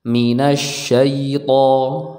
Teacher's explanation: huruf to ini diucapkan dari ujung lidah kita tempelkan ke pangkal gigi seri yang atas